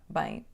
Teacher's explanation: No fim da palavra bem, temos o som nasal e não fechamos a boca. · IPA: /bɐ̃j̃/